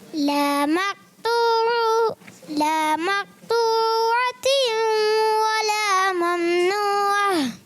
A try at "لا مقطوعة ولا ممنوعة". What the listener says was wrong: آپ نے قلقلہ چھوڑ دیا. لا مقطوعة ولا ممنوعة.